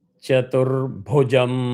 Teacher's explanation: bhu is again hard, comes from the nabhi, mahaprana